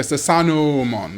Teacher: they don't say Susanuomon, but instead more of a long vowel sound